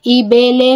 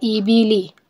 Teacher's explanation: رواں ایسے پڑھا جاتا ہے، مجہول نہیں کرنا ہوتا، ای بے لے نہیں پڑھنا ہوتا، ای بی لی، اور نہ ہی کھینچنا ہوتا ہے.